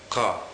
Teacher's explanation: this is essentially a sound which is made further back in your throat. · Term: kuf